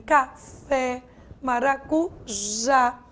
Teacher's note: se essa sílaba mais forte está na última sílaba, como em café, maracujá, a palavra é uma palavra oxítona